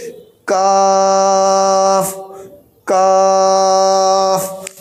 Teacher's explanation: तो काफ को हम जुबान की जड़ के थोड़ा आगे वाला हिस्सा ऊपर सख्त तालु में लगाएंगे, ऐसे कहेंगे काफ काफ।